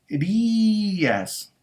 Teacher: Y esa tilde, obviamente, la vamos a poner en la vocal cerrada, porque estamos diciendo que esa vocal cerrada ahora se convirtió en una vocal que pudo haber sido átona, pero ahora se convirtió en una vocal tónica, es decir, en una vocal que tiene mucha fuerza cuando lo pronunciamos y entonces se separa de la vocal que le sigue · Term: hiato